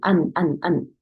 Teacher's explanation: 혀가 닿고요. 그 다음에 코 소리가 나요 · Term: 눈